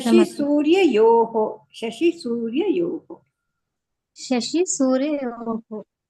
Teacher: ಪ್ರಣವ ಶಬ್ದ ಮಧ್ಯದಲ್ಲಿ ವಿಸರ್ಗ ಬಂತು ಅಂದ್ರೆ ಅರ್ಧಕ್ಕೆ ಕಟ್ ಮಾಡ್ಬೇಕು. ಲಾಸ್ಟ್ ಅಲ್ಲಿ ಇವಾಗ ಶಶಿ ಸೂರ್ಯಯೋಹೋ ಅಲ್ಲಿ ಪೂರ್ತಿ ಹೇಳ್ಬೇಕು ವಿಸರ್ಗ.